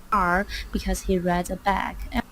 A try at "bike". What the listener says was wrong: It's rides, a bike, not bag. Rides, a bike.